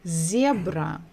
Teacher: so we stressed the first syllable